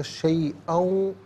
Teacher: حمزہ پر دو زبر کی تنوین ہے، اسے واو کے ساتھ ملا کر واو کی آواز کو ادا کیا جائے گا، شیئاؤں۔ اور اگر یہاں وقف کریں گے تو شیئا پڑھیں گے کہ دو زبر کی تنوین وقف میں الف سے چینج ہو جاتی ہے۔